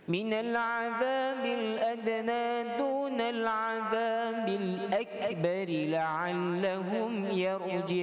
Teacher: Kalau berhenti, qalqalahnya beratlah, qalqalah yang kubra. Kalau tuan-tuan sambung, dia tak ada qalqalah lah, dibaca ba dengan kasrah.